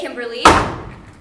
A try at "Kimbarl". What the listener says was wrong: It's pronounced Kimbar L. No E. The E silent.